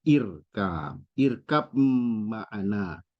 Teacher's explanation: ba sukun sama mim tempat keluarnya sama dua bibir tapi secara sifat berbeda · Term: Idam mutajanisain